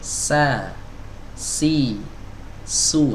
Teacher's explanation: kalau kita mengucapkan sa, ujung lidah kita nempel ke dinding bawah, ya, dinding bagian dalam yang bagian bawahnya dari gigi seri bawah, ya. Sa, si, su, terasa ya, ujung lidahnya nempel di situ. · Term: huruf sin